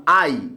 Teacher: আই একটা যৌগিক স্বরধ্বনি কারণ আই উচ্চারণের সময় কয়টা স্বরধ্বনি উচ্চারিত হচ্ছে দুইটা